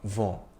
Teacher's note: The N is not really articulated. The vowel sound before it is nasalized